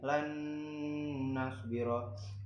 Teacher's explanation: di sini na-nya itu ditasydidkan, jadi nun sukun bertemu dengan na, jadi ditasydidkan